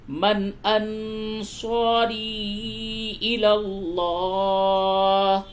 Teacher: نون ساکن کے بعد حمزہ ہے اس جگہ پہ اظہار ہوگا یعنی نون کی آواز کو بالکل ظاہر کر کے پڑھیں گے